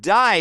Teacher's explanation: Australian accent, they may say words like day more like die